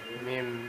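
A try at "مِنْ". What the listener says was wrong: Min. No, min. In sound, right? Min. But now because you're connecting and you know the ruling that says you have to change it to a meme. Mim da.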